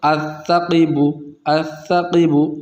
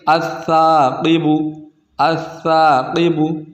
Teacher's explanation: سا کے ساتھ الف ہے، الف کو کھینچ کر پڑھیں گے الثاقب، اگر یہاں پر الف نہیں ہوتا تو کچھ اس طرح پڑھتے الثقب، الثقب، لیکن یہاں پر الف کو کھینچنا ہے تو یہاں پر الف مدہ ہو رہا ہے تو اس کو پڑھیں گے الثاقب، الثاقب۔